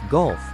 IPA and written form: ɡʌlf (gulf)